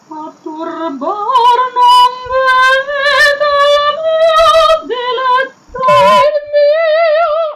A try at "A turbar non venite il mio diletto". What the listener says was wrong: Sì, ma la L, the L is not in the back, it's not L, this is Russian L.